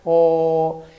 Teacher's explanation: en la vocal O, la lengua retrocede hacia el velo del paladar. O, y por eso se llama vocal posterior.